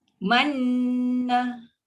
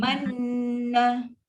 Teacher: Okey, bila nun sabdu, mim sabdu, nampak ni mesti standby, masuk, tekan, kita dah tahu memang itu fungsi dia. Mesti dengan lancar, jangan tersangkut, plus ada dengung. Dengung mesti 2 harakat. Okey, cara nak bunyi dia manna.